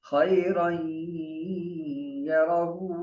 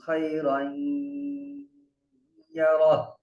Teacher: یہ گو یہ جو ہا ہے, اس پر جب وقف کریں گے تو ہا کو ساکن کر دیں گے